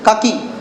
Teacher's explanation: की में ज्यादा लंबा नहीं आना